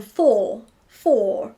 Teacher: English people barely pronounce the R when it goes after a vowel. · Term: drop the R